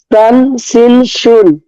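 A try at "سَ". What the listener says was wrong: সা, তিনোটাই যেন সা উচ্চারণ হয়। এরকম যেন না হয় যে একটা সা হয়েছে দুইটা সিন হচ্ছে, বা দুইটা সা হচ্ছে একটা সিন হচ্ছে, এরকম যেন না হয়। তিনটাই সা, তিনটাই সা সা উচ্চারণ হবে, সা নরম হবে।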